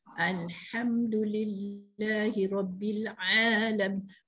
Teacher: Kalau Alhamdulillah, pastikan angin pedahnya keluar, dengar di telinga kita. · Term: ha pedas